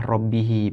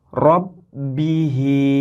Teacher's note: ini memenuhi rongga mulut dan ada teori lain ketika membacanya itu seolah-olah mulut sedikit mencucu atau mulut sedikit di mencucukan ke depan sebagai isyarat bahwa ini adalah bacaan rok tebal atau tafkhim